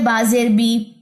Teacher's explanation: English کا ای نکلنا چاہیے جبکہ ہم آئی نکال بیٹھتے ہیں یا او نکال بیٹھتے ہیں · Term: زیر